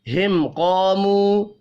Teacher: ہم، قاموا ملا کر پڑھیں گے. میم ساکن کے بعد قوف اظہار شفی ہوگا، غنہ نہیں کرنا. قاموا، قوف حروف مستعلیہ ہے، پر پڑھا جائے گا.